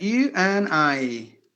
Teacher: The A is gone and the D is gone.